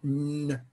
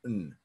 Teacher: the D assimilated and became a lengthened tensor N. As opposed to a short N.